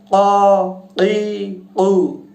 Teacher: জিহ্বার শেষ অংশ থেকে উচ্চারিত হবে। কফ উচ্চারণ হবে ক ই উ, এরকম।